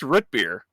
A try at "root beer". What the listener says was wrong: It sounds like you're saying with a U. So root.